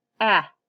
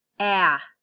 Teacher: Notice my mouth is smaller with the eh. When I say ah, my mouth opens wider.